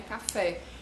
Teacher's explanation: a tonicidade é mais forte na última sílaba que é o fé não é café então essa palavra caracterizado como oxi cúpula é · a gente sabe que a tonicidade é mais forte na última sílaba, que é o fé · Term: sílaba tônica, oxítona